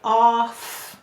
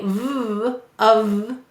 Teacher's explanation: It's a voiced and unvoiced sound. So f is unvoiced, but we say v, of, which is voiced.